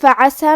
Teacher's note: کلمت فعسا میں فا پہ اور عین پہ دونوں پہ زبر ہے تو ہم یہ دونوں زبر کو برابر سے ادا کریں گے اور عین کو حلق کے درمیان والے حصے سے پڑھیں گے